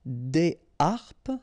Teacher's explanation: so you don't make the liaison between the two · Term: H aspiré